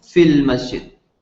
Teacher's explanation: whenever you're reading the word fi and then al comes afterwards, you don't pronounce the long vowel. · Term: It becomes short